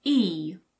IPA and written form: i (he)